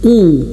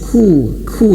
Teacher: Kalau huruf qaf dia tebal. Ku. Kemudian huruf kaf dia tipis.